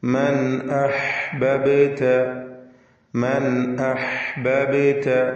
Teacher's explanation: മൻ എന്നതിലെ സാക്കിനത്ത നൂൻ ഇൽഹാർ ഹൽഖി നൽകി മണിക്കാതെ വെളിവാക്കണം. ശേഷം ഹംസയാണ് വന്നിട്ടുള്ളത്.